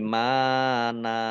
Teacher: Nun fathah tanwin alif kalau dibaca berhenti atau wakof maka dibaca fathah dan panjang 2 harokat. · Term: mat iwad